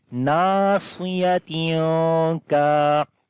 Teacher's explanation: After the tanween, the next letter is kaf, which is one of from 15 ikhwa letters. We hide the sound of noon here